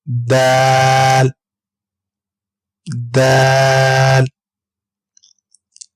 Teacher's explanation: دال زبان کی نوک اور اوپر کے دانتوں کی جڑ سے ہم ادا کریں گے